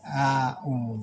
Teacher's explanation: Banyak yang membaca hamzah semua, a'u, atau sebaliknya dibaca dengan ain, a'u, padahal seharusnya dibaca alif dengan ain, a'u. Jadi a-nya turun dari bawah langsung ke atas, dari bawah ke atas dengan mulut menganga terbuka lepas.